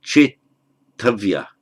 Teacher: First of all, the I is gunated, strengthened to che, and the d followed by t, the d has to become a t. So chetavya.